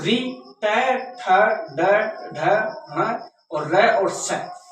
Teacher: ये इसके अंदर यानी कि वर्ण आ जाते हैं जो कि हमारे मूर्धा नामक स्थान से बोले जाते हैं